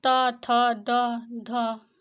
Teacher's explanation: हमारी जीभ दांतों में टच करती है। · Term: दंत व्यंजन